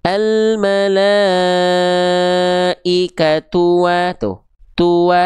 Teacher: Maka tua cukup dibaca satu kali pelafalan atau satu ketukan atau satu hitungan atau satu ayunan. Almalaikat tua tuh tua satu kali ayun atau satu kali ketuk. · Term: satu harakat